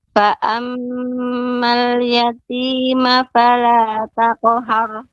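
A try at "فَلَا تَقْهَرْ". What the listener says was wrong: Qafnya lebih dalam lagi Ibu. Taqhar itu, kalau taqhar itu qafnya belum tebal ya. Jadi harus lebih naik lagi. Taqhar.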